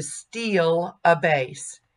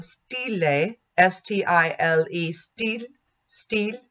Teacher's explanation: The L of steal changed the vowel. But in Italian, stile, S-T-I-L-E, steal, steal, the L does not change the vowel. It stays a monophthong and it's not colored by the consonant.